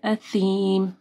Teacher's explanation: اثیم، سا کے مخرج کا خیال رکھنا ہے. جب آپ سا پڑھیں گے تو آپ کی زبان اوپر کے 2 دانتوں کے پاس آئے گی